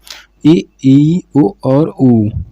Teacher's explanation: मुख द्वार लगभग बंद सा रहता है · मुख्य द्वार लगभग बंद सा रहता है, मतलब ये ऐसे स्वर हैं, जब बोलोगे तो ऐसा लगेगा लिप्स जो हैं बंद हुए हैं।